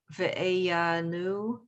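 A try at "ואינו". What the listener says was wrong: So the yud is going to be silent and it goes with ah. This is O.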